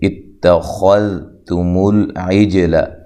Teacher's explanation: خا کو موٹا ادا کرنا ہے، ذال کو نرم ادا کرنا ہے